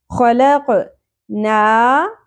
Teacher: کھڑی زبر ایک الف کے برابر کھینچنا ہے